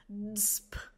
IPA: dsp